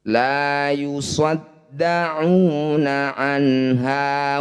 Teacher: Izhar halki adalah nun sukun atau tanwin bertemu salah satu huruf 6, hamzah, ha, kho, ain, ghain dan ha. Cara bacanya bunyi nun baca jelas, tidak usah dengung.